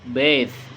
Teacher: voice, dental, and fricative.